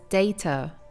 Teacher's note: The first D is very strong, but the T pronounced as a D is softer. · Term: flap T